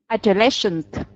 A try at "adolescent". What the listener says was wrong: Not shent, adolescent.